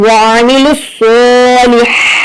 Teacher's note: اب یہاں پر لام کو ڈائریکٹ ہم صاد سے ملائیں گے